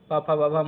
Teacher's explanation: यहां पांच व्यंजन ओष्ठ से बोले जाते हैं। अतः ओष्ठय वर्ण कहलाते हैं।